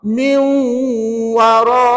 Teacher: Masukkanlah nun mati ke dalam waw. Dan baca dengan dengung 2 harakat.